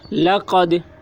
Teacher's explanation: دال میں قلقلہ ہوگا، دال حروف قلقلہ میں سے ہے اور اس پر جزم ہے، اس لیے دال میں قلقلہ ہوگا.